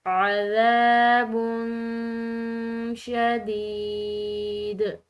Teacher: عذاب شدید. اس یا ساکن کو ہم نے کھنچاؤ دیا ہے کیونکہ اس کا پیچھے والا حرف مکسور ہے، اور مکسور حرف یا ساکن سے پہلے ہو تو وہ یا ساکن یا مدہ کہلاتی ہے.